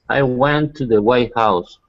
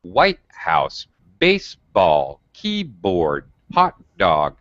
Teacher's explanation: in compound noun it's very abrupt and sharp drop